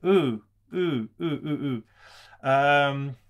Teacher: In Japanese, it's pronounced without the rounding of the lips, ooh. If that's hard for you to do, just try to stretch your smile when you say it, ooh, ooh, ooh, ooh, ooh.